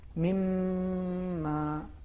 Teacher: جس طریقے سے مما، اصل میں من پھر ما ہے، بے شک. لیکن نون کا چونکہ ادغام میم میں ہو رہا ہے جی اور پھر وہی میم مشدد ہے